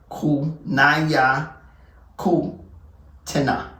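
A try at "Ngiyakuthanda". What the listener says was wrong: Okay, so I understand you're gonna say Naya because this is I for you, but for us it's E. So pronounce it as in knowing that I is E.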